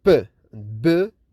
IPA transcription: p,b